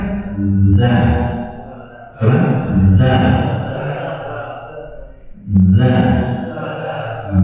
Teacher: Huruf Zan itu keluar di punggung lidah.